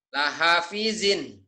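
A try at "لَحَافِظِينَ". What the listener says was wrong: Hanya panjang. Lahafizin.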